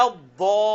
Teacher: یہ 5 الف تک کم از کم کھینچنا، یہ بڑی مد ہے، اور کھینچتے ہوئے یہ لام سے ملنا بھی ہے، اسی آواز میں لام کے ساتھ جا کے جڑے گا اور پھر آگے یہ لین بنے گا.